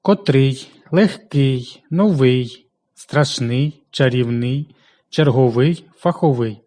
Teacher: прикметники наголошується переважно на останньому складі